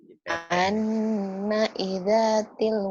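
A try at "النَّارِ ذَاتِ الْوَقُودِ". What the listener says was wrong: Anari, rinya ketinggalan. Anari.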